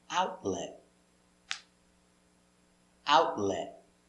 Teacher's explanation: we don't say out let we say out lit the tongue goes up and you stop